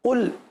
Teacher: قل قاف کو پر پڑھیں گے, لام کو باریک پڑھیں گے